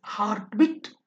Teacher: Spondic, two stressed syllables together